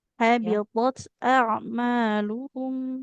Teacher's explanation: huruf th adalah huruf yang tebal diucapkan dengan mengangkat pangkal lidah